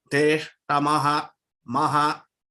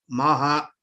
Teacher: The associated syllable is ma, which is a Hrasvam. So ha will also be short. Ma is short, ha will be short. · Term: Visargam